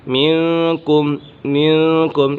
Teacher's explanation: منکم، منکم یہاں اکفا کا قاعدہ لگ رہا ہے، نون ساکن کے بعد کا حرف اکفا میں سے، کاف حرف اکفا میں سے ہے تو یہاں اکفا کا قاعدہ ہوگا، یعنی غنہ کر کے پڑھیں گے